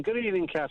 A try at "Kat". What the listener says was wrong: I mean, it's still only the first syllable, but that's better.